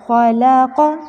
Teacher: ख़ा मोटा है और क़ाफ़ भी मोटा है